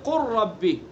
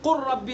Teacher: قل ربی ہے لیکن قر ربی اس کو پڑھا، لام کا را میں ادغام کیا. ٹھیک ہے، تو یہاں لام اور را، لام اور را کا مخرج ایک نہیں ہے لیکن قریب قریب ضرور ہے.